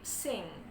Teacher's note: Nah, suara akhirnya itu adalah suara nge. Nah, suara nge itu adalah voiced velar nasal.